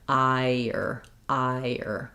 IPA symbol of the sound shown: aɪɚ